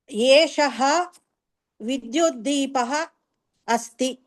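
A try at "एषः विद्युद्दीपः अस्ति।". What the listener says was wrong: ఉత్తమం.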